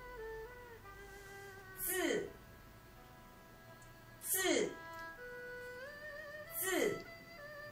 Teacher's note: the I isn't really pronounced here. It just makes the Z longer.